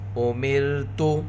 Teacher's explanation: را ساکنہ سے پہلے زیر، را کو باریک پڑھیں گے۔